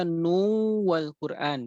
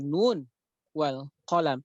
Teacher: Dan kemudian di dalam surat Al-Qalam, di sini tidak dibaca nu wal Quran, gitu ya. Tidak nu, tidak diidghamkan, tetapi diidharkan